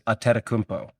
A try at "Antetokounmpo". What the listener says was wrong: there is no second N there. It's A because it's spelled ANTETOKOUNMPO. So it's Ante.